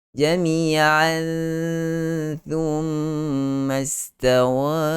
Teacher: kena masukkan bunyi tanwin ataupun bunyi nun ke dalam huruf tha. Maksudnya sembunyikan bunyi nun dalam huruf tha. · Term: ikhfa hakiki